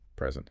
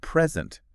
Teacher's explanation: if you stress the first syllable it means a gift right present but if you stress the second syllable it means to give something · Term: word stress